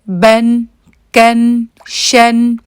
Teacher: کسی بھی حرف پہ جب تنوین ہوتی ہے تو اس وقت آپ نے اس میں جو غنہ آتا ہے، جو اینڈ میں نون کی آواز آتی ہے، اس کو آپ نے زیادہ لمبا نہیں کرنا